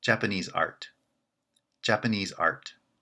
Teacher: we make a compound using the words japanese and art first art is not branching so it's the weak member of the compound